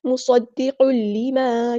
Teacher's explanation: قاف کے اوپر تنوین آئی ہے، تنوین کو ہم نے آگے دیکھنا ہے، اس کے دکھ رہا ہے لام، ہم یہاں پہ ادغام کریں گے، ادغام بلا گنہ · ہم یہاں پہ ادغام کریں گے، ادغام بلا گنہ، ادغام کامل، مصدق لما، ٹھیک ہے، اس طرح قل ایسے نہیں کرنا، ٹائم نہیں دینا.